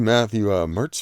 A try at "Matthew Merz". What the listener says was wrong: It's pronounced Merz. There's no T.